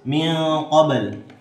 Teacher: ikhfa hakiki sebab nun sukun bertemu huruf kaf, dan qalqalah sughra sebab huruf ba sukun asli.